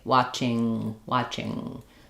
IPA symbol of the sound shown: ŋ